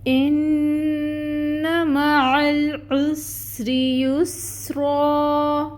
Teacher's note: حمزہ کے نیچے کسرہ کی حرکت ہے، 1 کاؤنٹ ادا کریں گے، محقق ادا کریں گے، ای کی ساؤنڈ آئے گی، نون مشدد ہے، غنہ ہوگا 2 کاؤنٹس کے برابر، اور فتحہ کی حرکت جو ہے اس کو 1 کاؤنٹ ادا کریں گے۔